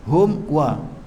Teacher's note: Mim mati tengah waw ni hukum dia izhar syafawi. Cuma izhar dia kuat, maka kita baca putuskan suara